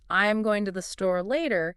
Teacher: the natural emphasis would be on going, store, and later.